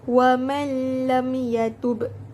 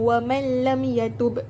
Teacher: memasukkan huruf nun mati ke dalam huruf idgham bila gunnah tanpa perlu didengungkan. Jadi tak perlu dengung.